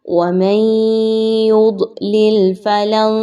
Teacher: نون ساکن کے بعد یا کا حرف آ گیا، ادغام مع الغنہ کیجئے